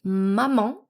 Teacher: able to say maman with the nasal vowel en at the end